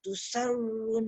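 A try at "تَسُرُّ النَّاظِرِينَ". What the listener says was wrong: Tasur. Tasur. Bonda tasur bukan tusar. Bonda sebut tusarrun tadi. Dia jangan tasurun tasurrun sebab ra ada sabdu. Tekankan ra.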